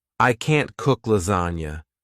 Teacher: if you want to emphasize that you can't do something, you emphasize the word can't.